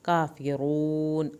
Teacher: کافرون، کاف کی کھڑی زبر کو کھینچیں لیکن کاف کو پتلا پڑھیں۔ کافرون، را کو پر کر کے اور آخر میں واو ساکن کی وجہ سے اس کو کھینچیں گے اور آخر میں نون کو نہیں ہلائیں گے